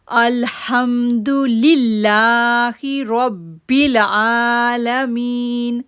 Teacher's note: می کو 2 سیکنڈ کے لیے کھینچیں گے کیونکہ یا ساکن سے پہلے زیر ہے